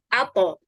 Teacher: pada posisi pangkal dua gigi seri at atau dengan kata lain ujung lidah bertemu dengan tempat tumbuh ya tempat tumbuh gigi seri atas